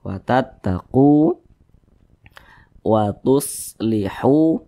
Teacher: dibaca panjang Mad Thobi'i panjangnya dua harakat